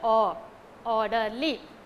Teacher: it's a three syllabic word and the word ends with l y then the stress fall on the first syllable